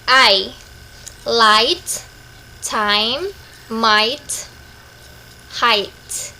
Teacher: The vowel sounds in the word is a diphthong. It starts with position a and moves smoothly on the I position within one syllable.